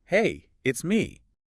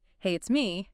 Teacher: if you went up at the end, hey, it's me, that would sound like a question, like you're unsure if the person knows who me is.